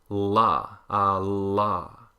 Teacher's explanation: You get the tongue raised in the front like the alveolar L, a la, and you get the tongue raised in the back like the velar L, la, and so you get them both together, la, a la. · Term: American standard L